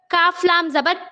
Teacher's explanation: لام زبان کے کناروں کو سائڈ کے داڑوں کو لگانے سے لام ادا ہوتا ہے، لام کو ہم باریک پڑھیں گے